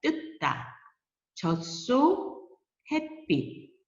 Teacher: 햇빛, 이것도 시옷이지만 디귿으로 소리 나요. 쓰기는 시옷, 치읓 이렇게 쓰지만 다 디귿으로 소리 나는 소리.